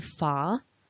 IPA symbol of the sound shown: ɑ: